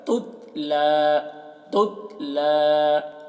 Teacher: تا میں قلقلہ نہ ہونے پائے